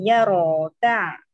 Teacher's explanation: ro-nya tebal, huruf sebelumnya harokatnya fathah. Jadi ya ro ta.